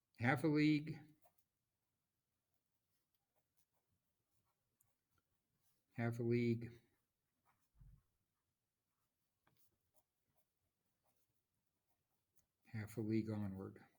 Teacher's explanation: so we have stressed unstressed unstressed stressed unstressed unstressed stressed unstressed unstressed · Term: dactyl